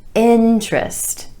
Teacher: With emphasis on the first syllable and the vowel sound I.